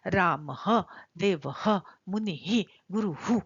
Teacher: इसका उच्चारण थोड़ा थोड़ा ह जैसा होता है सांप के फुफकार की तरह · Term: विसर्ग